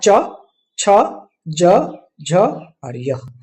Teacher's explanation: जब जीभ का पिछला हिस्सा ऊपर तालु को छूता है, तब जो ध्वनि निकलती है उनका उच्चारण स्थान तालु से होता है।